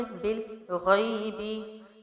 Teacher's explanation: بل باریکی سے ملا کے، غائن موٹا ہے اور آگے یائے لین ہے، نرمی سے پڑھیں گے یا کو اور جلدی چھوڑیں گے